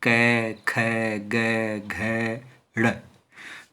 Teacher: तो पांचों का ही उच्चारण स्थान क्या है, कंठ है।